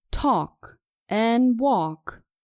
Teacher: talk and walk are pronounced correctly without the consonant L we say talk and walk and not tulké and walk remember · Just like the words could, would, and should, talk and walk are pronounced correctly without the consonant L